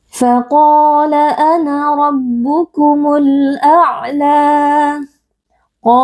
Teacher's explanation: qo huruf tebal kita baca dengan mengangkat pangkal lidah